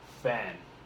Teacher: The N makes the A shorter.